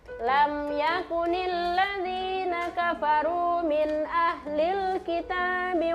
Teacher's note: Jadi mim sukunnya tidak boleh kasih dengung-dengung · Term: izhar syafawi